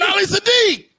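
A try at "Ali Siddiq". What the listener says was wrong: You didn't put no D on my name.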